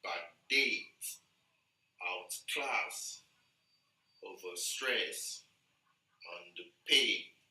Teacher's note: So all these words, we have the stress on the second syllable